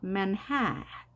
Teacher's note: 앞에도 에로 읽지만 소리가 약하게 man 그리고 hat가 높게 올라가는 거죠. manhat. 그 다음에 뒤에 a는 발음이 되지 않습니다. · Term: 강세